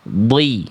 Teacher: Dod itu huruf tebal sama kayak shad. Angkat pangkal lidahnya.